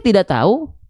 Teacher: saya yakin teman-teman melafalkannya huruf kafnya, huruf K dan huruf H-nya nggak akan kedengeran